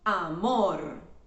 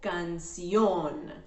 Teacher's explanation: Palabras agudas. These are the words with the strong syllable at the very end of the word.